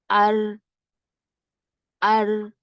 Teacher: زبان کی پشت ہے وہ اگر اس کے اپوزٹ تالو کو لگتا ہے تو را ادا ہوتا ہے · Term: را کا مخرج